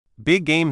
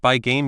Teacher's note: Big game sounds like by game. You don't need to say the G twice